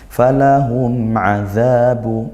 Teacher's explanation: mim sukun bertemu ain izhar syafawi dibaca jelas